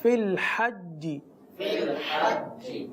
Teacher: یہاں پر ہمیں یہ خیال رکھنا ہے کہ جیم کی آواز میں چے کی آواز شامل نہ ہو. جیسے فی الحجی، جیسے یہ چے کی آواز جو ہے یہ نہ ہو.